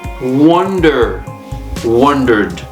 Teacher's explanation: the stress the emphasis is on the first syllable